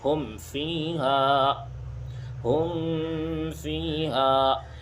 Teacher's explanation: تو یہاں اظہار ہوگا یعنی غنہ بالکل بھی نہیں کریں گے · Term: اظہار شفوی